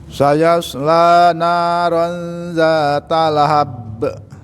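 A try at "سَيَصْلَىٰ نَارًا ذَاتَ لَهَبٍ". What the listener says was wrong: Baik. Sudah Bapak, barakallahu fiik. Nanti dilatih lagi di rumah Pak.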